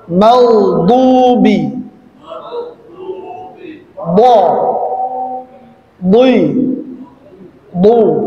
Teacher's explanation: depan lidah sampai dengan tengah lidah itu dia menempel ke langit-langit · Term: huruf pinggir lidah